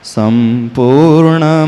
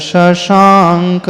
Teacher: संपूर्ण में स जो है दंती है ना सड़क का स है और शशांक में तालव्य है